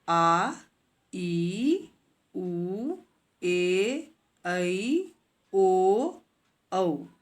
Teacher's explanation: दीर्घ स्वर जिन स्वरों के उच्चारण में ह्रस्व स्वरों से लगभग दुगुना समय लगता है उन्हें दीर्घ स्वर कहते हैं। इन संख्या में 7 हैं।